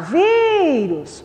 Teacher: Sílaba tônica É o vi.